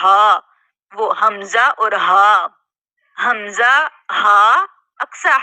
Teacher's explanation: सीने की तरफ जो सबसे आखर में हिस्सा है दूर वाला हिस्सा यानी कि अक्सा हल्क सीने के जानिब वाला हिस्सा